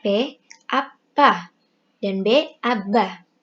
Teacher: tempat artikulasinya berada di bilabial